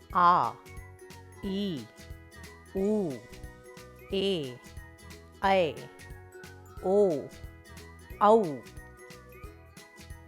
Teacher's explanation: दीर्घ स्वर जिनका उच्चारण अधिक समय में और ऊंचे स्वर में किया जाता है, दीर्घ स्वर कहलाते हैं, जैसे आ, ई, उ, ए, ऐ, ओ, औ।